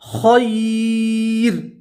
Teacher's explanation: وقف کریں گے تو تنوین کو جزم سے بدلیں گے اور را کو باریک پڑھیں گے